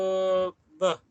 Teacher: Okey, separuh vocal, dua bibir, okey, dua bibir W, di mana untuk letupan dua bibir bersuara. Okey, bersuara iaitu b